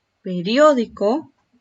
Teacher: ¿Dónde recae la mayor fuerza de voz? En la sílaba dio, ¿verdad?